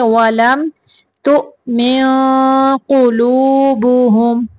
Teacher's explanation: نون کی آواز کو ناک سے چھپا کے نکالیں گے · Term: اخفا